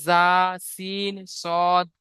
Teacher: 13, 14 মাখরাজ, জিভের আগা এবং সামনের উপরের এবং নিচের দুই দাঁতের আগার সাথে লাগিয়ে উচ্চারিত হয়